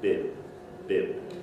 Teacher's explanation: you don't have any aspiration but you do have voice